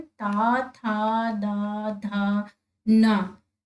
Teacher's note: जो ता वर्ग है आपका, तावर, ता, था, दा, धा, ना, जब देखिए आप यूज कर रहे हैं तो आपके जो दांत हैं उनसे जीभ टच हो रही है तो इसको हम दंते कहेंगे। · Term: दंत्य व्यंजन